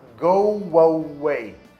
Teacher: Então ele tem aquele intrusion do som de W.